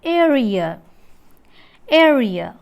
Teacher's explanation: a glide from front half open unrounded vowel to central unrounded vowel between half close and half open